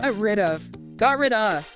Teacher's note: Well, first the final T in got might be unreleased or stopped, especially before the R of rid though linking can happen here too. Then the crucial link is between the final D sound of rid and the vowel sound at the beginning of of